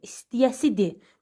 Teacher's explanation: Yəni ki, qrammatik şəkilsi olduqda tələffüzdə r olmur.